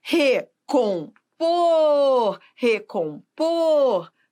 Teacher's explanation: o por é a sílaba tônica